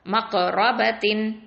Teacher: மக்ரபத்தின், இந்த இடத்துல காஃப் சுகூன், அப்போ கல்கலா கொடுக்கணும்.